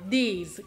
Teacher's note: Vediamo invece il plurale these, che ha un suono molto più lungo.